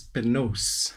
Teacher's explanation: so n replaced both r and l